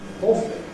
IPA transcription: ˈɔːfli